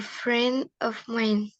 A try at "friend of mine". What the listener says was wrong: Friend of. Oh, masih nggak kedengeran D-nya. Friend of. Masih friend of. Friend of. Friend of mine. Kalau bilangnya friend of mine, nah, nggak kedengeran kayak orang bule, nggak kayak penutur asli bahasa Inggris.